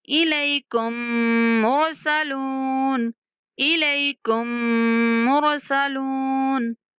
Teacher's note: کاف کو ڈائریکٹ مشدد میم سے ملائیں گے اور میم پر غنہ کرتے ہوئے را سے ملائیں گے